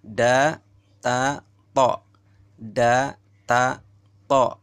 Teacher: keluar dari ujung lidah serta menepati gigi 2 yang di atas. Coba rasakan.